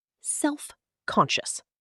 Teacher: 3 syllables when spoken. Stress on the second.